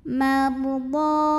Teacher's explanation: Huruf ra dibunyikan secara tafkhim sebab huruf sebelumnya mim barisnya fathah. Bacanya ditebalkan. Mardha. Mad jaiz munfasil.